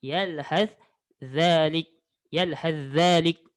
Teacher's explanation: Bila bertemu sa dengan zal, sa mati, zal berbaris hidup, awak masukkan huruf sa ke dalam huruf zal. Jadi awak sebut je lah, seolah-olah huruf sa ini tidak disebut. Huruf sa tidak disebut. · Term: idgham